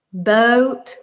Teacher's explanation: So like all of the vowels are really long and drawn out. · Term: accent of a Southerner